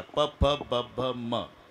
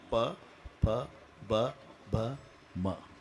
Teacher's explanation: मचा उच्चार वटाला ओठ लागल्याशिवाय होत नाही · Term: वष्टे